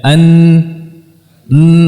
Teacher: bahasa Arab Dia memiliki juzul kisyumi bagian hidung ya An n ada gunah yang mengalir saat pengucapan huruf nun